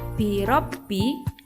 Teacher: bunyi huruf ro pada lafaz birabbi dibaca tebal ro dan dinamakan tafkhim.